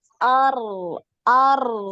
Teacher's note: Nah, yang ro sukun itu dialirkan.